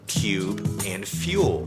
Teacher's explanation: we used to pronounce the long U sound, ooh, with a ya sound at the beginning, like we still do for words like cube and fuel